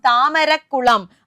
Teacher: ഇരട്ടിച്ചു കാ എന്ന് പറയുന്നത് ദൃഢ വ്യഞ്ജനമാണ് താമര പ്ലസ് കുളം താമരക്കുളം ആണല്ലോ രണ്ടാം പദത്തിന്റെ തുടക്കത്തിലുള്ള വ്യഞ്ജന വർണ്ണം ദൃഢവ്യഞ്ജനം ഇരട്ടിച്ചു